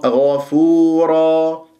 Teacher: عفوا غفورا، الغين مفخمة مرتبة ثانية مفتوحة من كلمة غفورا، والفاء مضمومة نضم الشفاه فيها، الواو سكنت بعدها ما الطبيعي حركتين، الراء مفخمة لأنها مفتوحة تنوين فتح أقف بمد العوض حركتين